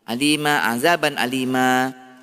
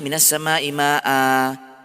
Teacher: tanwin fathah semuanya dibaca dengan kadar 2 harakat ketika wakaf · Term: mad iwad